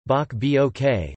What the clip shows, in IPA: bˠʷok